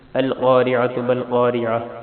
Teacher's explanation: القاف موٹی ہے، را بریک ہے، عین گلے کے درمیان سے نکالیں گے اور تا پشتو ہے.